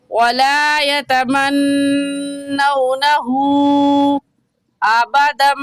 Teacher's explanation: उल्टा पेश को 1 अलिफ की मिकदार खींचते हैं, तो कुल 4 अलिफ के बराबर खींचेंगे, कम या ज़्यादा नहीं खींचेंगे।